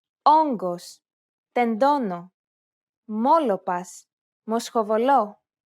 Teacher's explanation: The sound is similar to the O sound in the word pot, though try to open and round your mouth more than you would normally.